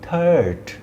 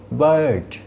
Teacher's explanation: থার্ড, গলা থেকে আসছে। বার্ড, গলা থেকে আসছে, এবং সাউন্ডগুলো লম্বা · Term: লং আ